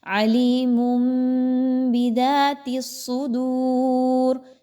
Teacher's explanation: دال واو پیش دو، واو مدہ ہے تو اس کو دو حرکات کے برابر کھینچ کے پڑھیے · تنوین کی آواز کو میم کی آواز میں بدلنا ہے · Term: اقلاب